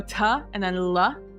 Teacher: And what it is you say ta at like the back of your teeth. You hit that t, and then you hit the l sound with like the middle of your tongue.